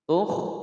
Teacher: kha berharokat sukun, tidak boleh dipantulkan. Tukh, tidak boleh ditawalotkan.